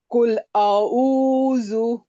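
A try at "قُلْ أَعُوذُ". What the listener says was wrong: नहीं, एक ही नहीं, अलग है। आ अलग है, ऊ अलग है, उसको अलग करिए।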